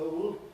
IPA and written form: əʊld (old)